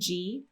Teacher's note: the letter G goes into tense e with the tongue sliding on the roof very high right from the beginning of that vowel sound